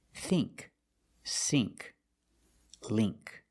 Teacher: You see ink, you make the long E sound, like green beans.